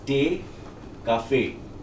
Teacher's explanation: Double e at the end in German is an ey ending.